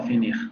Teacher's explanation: anterior cerrado no labializado